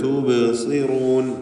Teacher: ബാഇൻ്റെ സുക്കൂൻ ഖൽഖല സുഗ്റ നൽകി ശബ്ദം ഹറക്കത്ത് പോലെ ചലിപ്പിക്കുക. സ്വാദിന് കസ്റാണ് എന്നതുകൊണ്ട് നിസ്ബിയായ തഫ്ഖീം, അതിൽ ഏറ്റവും താഴ്ന്ന ലെവൽ കുറഞ്ഞ തഫ്ഖീം ആണ് നൽകുക.